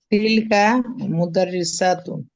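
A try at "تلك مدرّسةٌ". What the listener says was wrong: মুদাররিসাতুন, মাদ হবে না।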